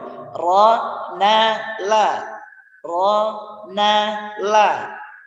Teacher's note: Kalau ro tempatnya agak di atas sedikit, kalau na agak turun sedikit dan ketika la bawahnya sedikit. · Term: ujung lidah